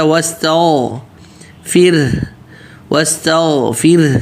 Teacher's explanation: سین واضح تا پتلا غیر موٹا